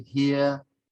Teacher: The R sound after vowels isn't sounded.